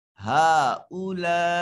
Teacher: ہا کے اوپر جو مد ہے چھوٹی مد ہے، اس کو 3 الف کے برابر لمبا کریں گے۔ یہ جو کھڑی زبر ہے یہ ایک حرکت اور ایک الف کے قائم مقام ہے نا، تو اس لیے یہاں یہ مد آ رہا ہے، اور لا میں بڑی مد ہے۔